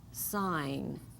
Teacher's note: we don't hear the G just the n